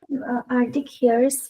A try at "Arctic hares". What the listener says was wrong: Not Arctic. See, there is a C there. Arctic.